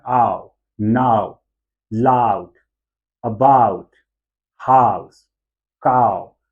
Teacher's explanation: यहाँ पर आ से हम ऊ की तरफ जो है वो ग्लाइड कर रहे हैं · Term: डिप्थोंग